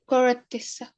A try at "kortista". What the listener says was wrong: Kortista. So the two T's changes into one T. Kortti, kortista.